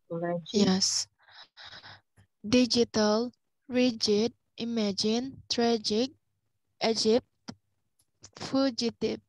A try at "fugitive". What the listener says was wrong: Good. Next. Fugitive, yeah.